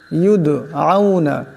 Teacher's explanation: এখানে দাল সাকিন, দাল কলকলা হরফ অসাথে এটি টক্কর খাবে।